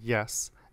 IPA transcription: jɛs